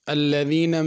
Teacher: الذین میں ذال ہے، اس کو زا نہیں پڑھنا